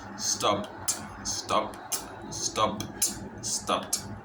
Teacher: Se pronuncia stopped. La P es muy corta.